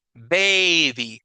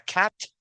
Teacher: Como baby, la A tiene un recorrido más largo. En cambio, la palabra cat, la A es súper corta.